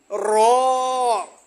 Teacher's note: জিহ্বার আগার পিঠ তার বরাবর উপরের তালুর সঙ্গে লাগাইয়া উচ্চারিত হয়